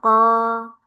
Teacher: Kemudian masuk ke pangkal lidah paling dalam ada qo dengan sedikit ka